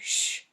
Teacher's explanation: your tongue almost touches the top of your mouth then the air comes out gently your lips are a little bit rounded and the sound is voiceless